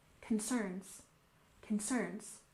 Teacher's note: And concerns, we stress the second syllable